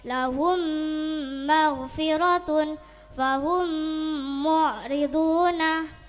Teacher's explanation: mim sukun bertemu mim dibaca masuk dengan mendengung. Contoh, mim sukun bertemu mim, lahum maghfiratun fahum mu'riduna. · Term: Idgham ma'al gunnah